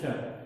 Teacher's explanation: तालव्य स को थोड़ा सा जीभ को मोड़ करके बोलना है